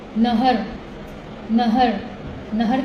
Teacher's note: ہ جو ہم پڑھتے ہیں نا، حلق کا سینے کی طرف والا حصہ